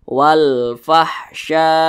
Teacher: karena ada alif lam berjumpa dengan huruf qamariah yakni huruf Fa maka alif lam dibaca jelas terbaca jelas dia dibaca izhar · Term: izhar qamariah, alif lam qamariyah